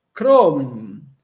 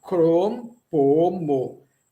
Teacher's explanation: Não nasalizamos. Vamos evitar nasalizar. Crom, eu falo cro e fecho a boca. Crom. Po, eu falo po, depois um mo.